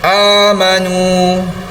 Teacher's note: Selepas huruf waw itu terdapat huruf alif yang berbulat donat di atas, itu adalah huruf alif ziyadah, tidak perlu dipanjangkan, tidak ada apa-apa hukum. Jadi kadar bacaannya masih lagi 2 harakat pada huruf nun berbaris hadapan bertemu dengan huruf waw mad asli.